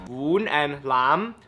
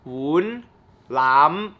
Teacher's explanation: woon and lam, both of those are rising tones